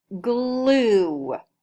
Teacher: I hear the vowel sound ooh at the end of the word